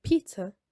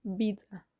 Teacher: Instead, when Arabic borrows words with p sounds, like pizza, it substitutes the p sound with b, so it becomes pizza.